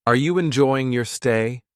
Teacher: I heard the rising tone at the end of stay.